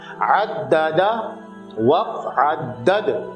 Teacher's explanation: عددا پہلے والے دال کو آپ نے جمع اور ٹھہراؤ کے ساتھ پڑھنا ہے کیونکہ اس کے اوپر تشدید ہے، اور دوسرا والا جو دال ہے وہ وقف میں ساکن ہو رہا ہے تو آپ نے وہاں پہ اس کو جو ہے وہ قلقلہ کرنا ہے، یعنی کہ جنبش دے کے پڑھنا ہے